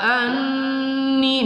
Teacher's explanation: nun bertasydid kita dengungkan ya wajib al-gunnah